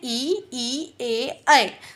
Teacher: यदि जीभ के अगले हिस्से से बोलते हैं तो वो अग्र है